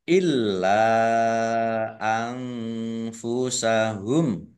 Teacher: Nun sukun bertemu dengan huruf fa, bacaan ikhfa. Dibaca samar-samar.